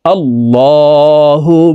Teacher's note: মিমের সাথে নাকের পাশে থেকে তিন সেকেন্ড পরিমাণ গুন্নাহ করে ধরে রাখবো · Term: ওয়াজিব গুন্নাহ